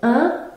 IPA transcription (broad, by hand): ɛ̃